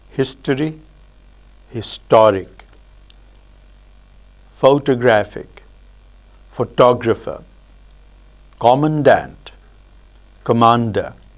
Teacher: what we notice is that there's an alternation between a full vowel and a schwa in all these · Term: vowel reduction